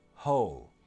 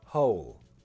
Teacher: With the dark L, the tongue will hit more against the back of the top teeth, or even just under the top teeth